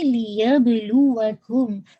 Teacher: make sure با پہ آپ نے قلقلہ کرنا ہے